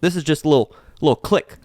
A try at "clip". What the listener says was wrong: Click. It's a clip. With a P.